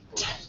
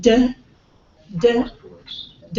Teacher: T unvoiced and d d d is voiced right so you can feel the vibration in that